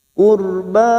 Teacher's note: ra sukun yang didahului dhamma kita baca tafkim